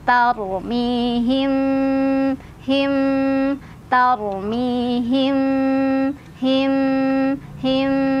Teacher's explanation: Jadi nggak terlalu menekan himnya. Him yang penting nempel aja ya. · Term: ikhfa syafawi